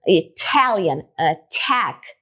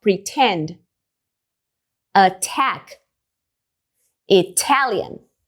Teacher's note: É só você produzir um T normal, mas soltando um pouco mais de ar. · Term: aspiração